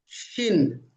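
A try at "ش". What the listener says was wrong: good, মাশাআল্লাহ মাশাআল্লাহ, সুন্দর,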